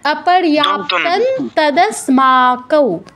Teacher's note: ত বর্গীয় অক্ষর, ত বর্গের অনুনাসিক ধ্বনি দন্তন্য, তাই অনুসারের স্থলে আমাদের দন্তন্য হসন্ত উচ্চারণ করতে হবে।